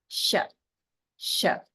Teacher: the Sha in Shiva um you want to think that your the blade of your tongue the flat part of the tongue is sort of lifted up towards the pallet the hard part of the mouth uh behind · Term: palatal sibilant